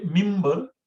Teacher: Actually, we say mimbar because it is written, if you see the spelling of mimbar is minbar. But because it's nun sakin, and after that there is ba, it's mimbar